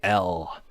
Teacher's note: That consonant, the dark L, is a velar consonant, so it's made in the throat.